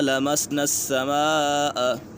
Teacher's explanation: وَأَنَّا لَمَسْنَا السَّمَاءَ، یہاں پر مد متصل ہے، حرف مدہ کے بعد حمزہ اسی کلمے میں ہے تو اسی وجہ سے مد متصل ہوگا